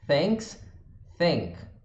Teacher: O TH pode ser um F ou um V, se for não vozeado ou vozeado. Só que em vez do lábio inferior, no dente, a gente vai usar a língua.